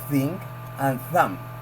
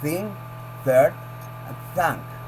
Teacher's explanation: The voiceless TH stick out the tongue quietly as at the beginning of thing and thumb. Remember that the sound is made without using vocal cords, thing, third, and thumb.